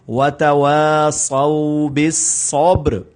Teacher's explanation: اب یہاں پر قلقلہ بھی کرنا ہے اور را پر قلقلہ نہیں کرنا مگر سٹاپ کرنا ہے، یعنی جزم کو پڑھنا ہے